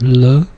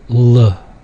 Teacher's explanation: With the L, it's the light L, so it's L, distinguished from the dark L